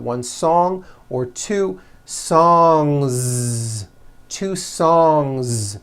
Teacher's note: So if you make it plural, don't forget to add a voiced Z ending.